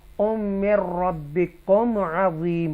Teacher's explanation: हरूफ़े यरमलून में से रॉ और लाम अगर आ जाए नून साकिना के बाद तो यहाँ गुन्ना नहीं करेंगे, इजहार करेंगे, क्लियर पढ़ेंगे.